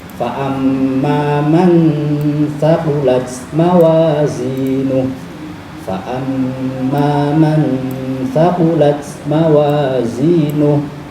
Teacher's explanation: dengungnya tidak seperti dengungnya guna, dengungnya samar, dengung sambil kita nyiapke huruf yang akan dibaca. Karena ini ketemu huruf ta, maka kita nyiapkan lidah kemana makhrajnya huruf ta. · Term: ikhfa